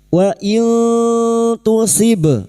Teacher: Wa in tu nun sukun bertemu ta ikhfa hakiki. Kita samarkan nun sukun dan mendengung selama 3 harokat.